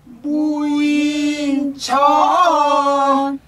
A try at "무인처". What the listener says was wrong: 천이 아니고 무인처. 무인처. 무인처. 무인처.